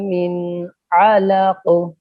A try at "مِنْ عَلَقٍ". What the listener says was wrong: मिन अलक, मिन आइन को क्लियर कीजिए.